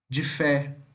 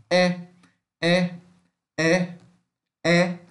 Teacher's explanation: O E também é uma vogal semiaberta, frontal. Frontal quer dizer, falamos mais perto da boca.